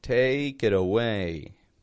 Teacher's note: life take it away and notice the flap T in there the T in the word it becomes a d